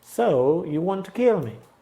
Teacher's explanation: Entonces tienen que saber y tienen que acentuar la palabra que lleva contenido, que es want